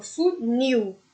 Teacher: O nil é muito mais forte que o fu, ou seja, se trata de uma oxítona.